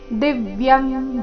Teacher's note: ದಿವ್ಯಂ ದಿ ಮೇಲೆ ಆಘಾತ